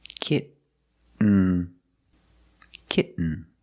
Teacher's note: When you make the stop T, the tongue is up, almost in the N position. So you don't have to change much.